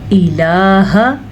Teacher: लाम खड़ी ज़बर ला की वजह से खींच के पढ़ना है, लेकिन हमज़ा से ई इसकी मिक़दार इतनी ही होगी।